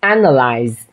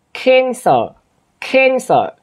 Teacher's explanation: phát âm là âm a, nhưng mà cái khuôn miệng của mình lại là khuôn miệng của âm e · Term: âm e bẹp